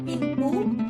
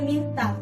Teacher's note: Bunyi apikodental, yaitu bunyi yang dihasilkan oleh keterlibatan ujung lidah atau apex dan gigi atas. Ujung lidah sebagai artikulator menyentuh gigi atas sebagai titik artikulasi.